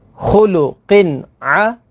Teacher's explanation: تنوین کے بعد عین ہے، عین حروف حلقی میں سے ہے تو یہاں پر اظہار ہوگا یعنی غنہ نہیں کریں گے